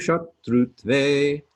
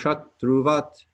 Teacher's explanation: The accent mark over an S is an SH sound that is pronounced towards the back of your mouth, so therefore a lower note, a lower sounding SH sound